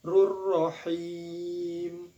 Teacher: hukum bacaan mad arid li sukun sebab mad tabi'i menghadapi huruf hidup lalu dibaca waqaf. Boleh dibaca 2 harokat, panjangnya boleh baca 4 harokat ataupun 6 harokat, tergantung konsisten kita dalam membacanya.